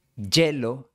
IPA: 'ɟʝe.lo